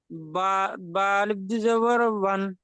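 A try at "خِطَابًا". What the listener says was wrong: আলিফটা পড়া হয় না, আমরা তো পড়লাম, আলিফ পড়া হবে না। বা দু জাবার বান।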